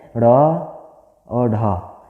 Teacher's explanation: वे व्यंजन जिनके उच्चारण में जिह्वा झटके से ऊपर की ओर उठती है उन्हें हम उत्सृप्य व्यंजन कहते हैं।